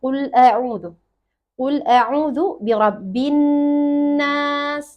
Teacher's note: mesti tahan dua untuk nun tasydid